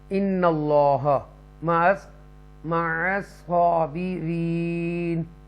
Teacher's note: ان اللہ، اللہ کا نام ہے، اس سے پہلے زبر ہے، تفخیم کر کے پڑھیں گے پر بولڈ اور ود اوپن ماؤس کے ساتھ